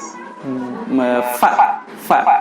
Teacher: Huruf fa itu tempat keluarnya bibir bawah bagian dalam menempel dengan gigi seri atas ya. Bibir bawah bagian dalam menempel dengan gigi seri yang atas.